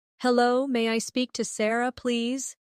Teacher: Notice how may I sounds like may-a in fast speech.